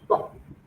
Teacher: The lips are closed, then you release the air with force, like an explosion. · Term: plosives